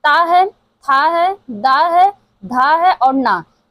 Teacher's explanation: ये जो त वर्ग है दंतव्य से उच्चारित होता है।